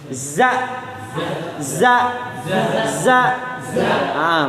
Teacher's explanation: Ada huruf yang dibaca sudah ketahuan, misalkan huruf zai, tempat keluarnya itu ujung lidah kepalanya diturunkan ke gigi seri bawah